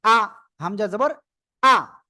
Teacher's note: হামজা উচ্চারণের সময় বাতাস বন্ধ থাকবে